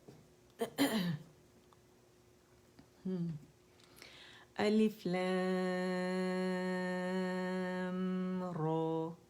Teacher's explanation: را کے مخرج پہ جانا ہے. ٹھیک ہے، الویولر رج یا گم رج